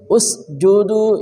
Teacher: jim ya, dari tengah lidah